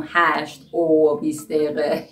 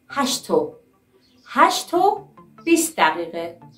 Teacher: They say hashto, attach o sounds to the t sound